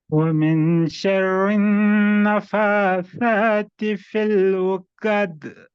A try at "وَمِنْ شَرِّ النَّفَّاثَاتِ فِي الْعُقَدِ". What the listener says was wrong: اور نفا، فا کو 2 بار پڑھنا ہے. نفاثاتی ومن شر.